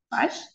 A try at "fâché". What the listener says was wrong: Fâché está acentuado. Oui, fâché. Cuando está acentuado, sí, ahí pronunciamos.